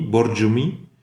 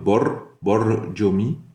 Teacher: Le R, c'est un R roulé espagnol.